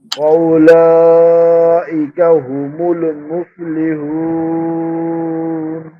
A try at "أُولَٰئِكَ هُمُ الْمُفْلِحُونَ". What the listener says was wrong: এখানে মনে হয় আরেকটু হু করা দরকার। দুইটা হু একরকম হয়ে যাচ্ছে। হুমুল আর মুফলিহুন, এই দুইটা হা কিন্তু একরকম না।